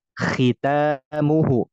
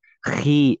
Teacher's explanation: Dia masuk kategori tebal tapi ternyata dibacanya tipis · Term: tafkhim nisbi